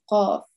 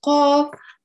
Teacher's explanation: The sound of qaf comes from the furthest back part of the tongue touching the roof of the mouth. And it almost blocks the throat when you're saying it